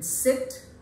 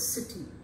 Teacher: the height of the tongue is nearly half close that means there is some amount of opening between the two jaws and like the first one it is unrounded and therefore spread